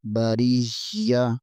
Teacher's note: خیر البریہ را زیر کے آگے یا ہے، یہاں پر یا کے اوپر شد ہے، یا کو تھوڑا سا دبا کر پڑھیں گے۔ بریہ لکھا تو بریاتی ہے، لیکن ہم وقف کی صورت میں بریہ پڑھیں گے